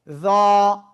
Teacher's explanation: মোটা আওয়াজে, ওই জিহ্বার আগে উপরে দুই দাঁতের আগায় লাগিয়ে